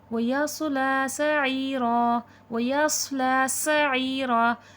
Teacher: صاد مستعلیہ ہے، موٹا کر کے پڑھا جائے گا اور سیٹھی کی بھی آواز آئے گی · صاد موٹا کر کے اور سیٹھی کے ساتھ پڑھا جائے گا اور سین میں سیٹھی کی آواز آئے گی پر موٹا نہیں کیا جائے گا کیونکہ یہ حرف مستعلیہ نہیں ہے.